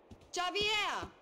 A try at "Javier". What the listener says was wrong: Bitch, you don't get it. It's Javier. It's pronounced like an H. Javier.